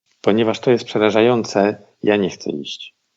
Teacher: We're kind of going up between the clauses, right?